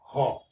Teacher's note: ज्यादा मात्रा में और झटके से उच्चारित होने वाली ध्वनि है ह तो ह ध्वनि जो है महाप्राण ध्वनि का आदर्श रूप है